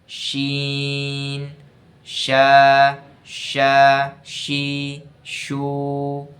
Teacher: এগুলো নরম করে পড়তে হবে, বাতাস জারি থাকবে আর আওয়াজটা নরম হবে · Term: হামসের হরফ